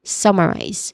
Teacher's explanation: So we do not say it is summarizy but summarize. Okay, summarize with clear stress on the first syllable